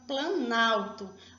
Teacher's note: Eu perdi a vogal O, então eu perdi essa sonoridade do O. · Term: perca sonora